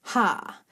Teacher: at that ha moment you have that constriction on your pharyngeal passage it's just a slight constriction in the in the entire passage